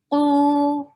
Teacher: qaf is heavy, 2 haraka long.